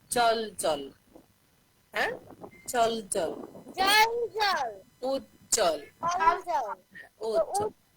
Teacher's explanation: এই জ্বর নিচে যে ব আছে, এই বটা কখনো উচ্চারণ হয় না, এটার শব্দটা, হ্যাঁ, সাউন্ড উচ্চারিত হয় না, এটা শুধু আমাদের বফলা হিসেবে থেকে যায়। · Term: জয় বফলা